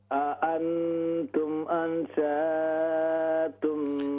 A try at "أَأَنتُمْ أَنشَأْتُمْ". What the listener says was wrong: ہاں جی اس شاء کو ہم نے لمبا نہیں کرنا. أأنتم أنشأتم